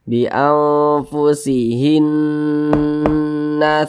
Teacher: Karena dia gunnah, maka cara membacanya itu ya digunakan tuh yaitu didengungkan. Nah, gunnah atau dengung. Nah, jadi suaranya itu kita tahan, kita panjangkan sejenak. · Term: gunnah musyaddadah